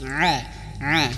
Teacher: Ain di tengah tenggorokan tidak boleh masuk hidung a a kalau masuk hidung itu akan terdengar jelas kalau ditutup